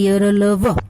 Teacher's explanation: इनके उच्चारण में जिह्वा किसी विशेष भाग को नहीं छूती। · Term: अंतस्थ व्यंजन